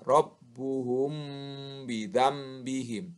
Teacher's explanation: Apabila ada mim sukun bertemu dengan huruf ba, maka cara bacanya harus samar di bibir, samar di bibir. Disertai dengan dengung. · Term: ikhfa safawi